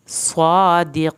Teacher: स्वाद को पुर करके पढ़ें, यकीन क़ाफ को पुर कर मोटा करें और या साकिन को खींचे, आखिर में नून हिलाना नहीं है।